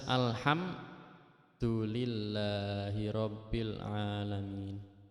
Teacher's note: Di situ ada mim mati bertemu dengan dal itu harus dibaca jelas. Jadi mim matinya jelas, dalnya tidak terpengaruh oleh huruf mim matinya. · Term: idhar syafawi